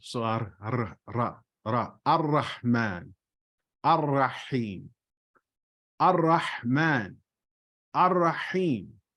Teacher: It is not like the Spanish R or equivalent of R. There is less of a roll. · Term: rolling your R